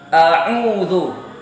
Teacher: Jadi ketika kita membaca a'udzu, awalnya kita baca alif, langsung kita arahkan ke huruf ain